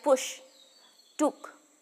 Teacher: in terms of tongue movement the sound is similar to the long u sound the lips are rounded and the lower jaw is somewhat raised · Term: short oo sound